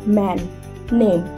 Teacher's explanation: এম মানে এটা ঠোঁট দিয়ে উচ্চারণ হচ্ছে। এন মানে জিভ দিয়ে।